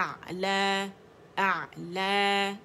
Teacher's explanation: حمزہ کو عین اور عین کو حمزہ نہیں بنانا ہم نے. اقص الحلق سے اعلی، نیچے سے اوپر ٹریول کرنا ہے. فار تھروٹ سے اپنے مڈل تھروٹ کی طرف جانا.